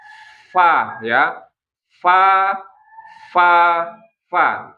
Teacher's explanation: Bahkan yang keluar adalah udara dulu, baru suara fa-nya. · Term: huruf fa